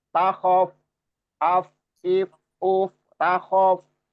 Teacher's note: Ya Musa aqabil, aqabil wala takhaf, wala takhaf. Fa-nya apa namanya disukun ya, ada sukun, tandanya sukun itu jadi ada rokhawah di situ